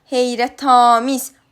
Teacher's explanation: Heyrətamiz sözündə heyrətamiz A saiti uzun tələffüz olunur, amma üçüncü hecadadır.